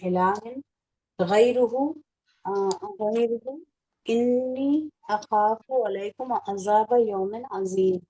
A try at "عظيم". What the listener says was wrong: عظیم. یہ جب آپ ذات پڑھتے یہ جو آپ ذا پڑھتے ہیں نا تو اس وقت زال کی مطلب نا پروننسیشن نہیں آنی چاہیے.